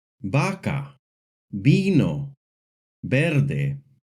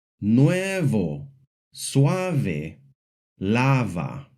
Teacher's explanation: In Spanish, the letter T makes a hard T sound, like in the words tienda, manta, corte. The letter V in Spanish makes a hard B sound, like in the words vaca, vino, verde. But it can also make a soft B sound when it is between two vowels, like in the words nuevo, suave, lava.